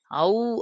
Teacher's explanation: அவ் அப்படின்னு சொல்லும்போது உன்னு முடியுதா அப்ப உ தான் இதுக்கு இணை எழுத்து